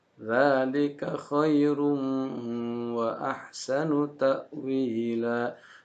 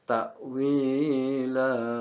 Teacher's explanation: Itu mentang-mentang nafasnya panjang lalu terbawa oleh lagu sehingga hukum tajwidnya terlewatkan atau bahkan keliru gitu ya. Jadi yang benar itu tidak dibaca panjang, hanya dua harokat saja